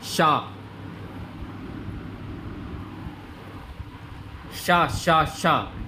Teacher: जीभ जो है आपकी ऊपर वाले हिस्से में टकरा रही है, ऊपर के तालु में।